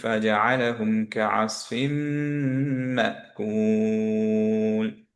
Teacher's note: সো হুম, মিম মিম merge হয়ে গেল, নুনটা গায়েব হয়ে গেল। হুম, দুইটা মিম যেহেতু আছে এখন, এখানে মিমটা অবভিয়াসলি আমাদের গুণনা সহ পড়তে হবে।